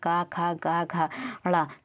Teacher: क ख ग घ ड़ तो ये सब हमारे कंठ से बोले जाते हैं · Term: कंठ वर्ण